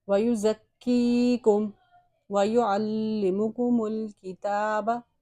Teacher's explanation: کاف پہ تشدید ہے اس سے ذرا جماؤ دے کے پڑھیں گے۔ یہ یا مدہ ہے اس سے ایک الف کی مقدار اس کو ہم نے کھینچ کے پڑھا ہے